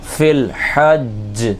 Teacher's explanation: فا لام زیر فل، فا کو ڈائریکٹ لام سے ملائیں گے جس کے اوپر جزم لگا ہوا ہے. حا جیم زبر حج، جمع والا قلقلہ کریں گے